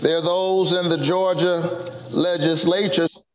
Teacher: he changes the stress of the word it's usually legislature but he makes it fit into his rhythm